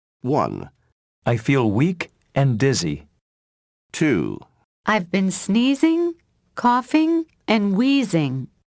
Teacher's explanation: use rising intonation on each item before the last item in a list use falling intonation on the last item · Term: intonation of lists